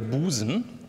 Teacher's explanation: Das heißt, Sie haben zugrunde liegend einfach nur ein S. Das U ist gespannt, das wird lang. Damit ist die Silbe hier silbenfähig, die wäre nicht überleicht.